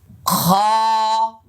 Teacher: এটা হল তিন নম্বর মাখরাজ মানে হলকের শেষভাগ থেকে এক আলিফ টান হবে। আবার এখানে লেখা আছে মোটা হবে।